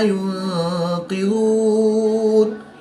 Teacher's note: وقف کی حالت میں مد عارض ہوگی، 2 سے 3 الف تک کھینچ کر پڑھیں گے